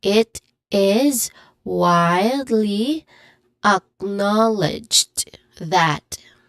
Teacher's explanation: the stressed syllables here would be wildly and acknowledged. The first syllable of those word which it which are a Y in widely and a in acknowledged.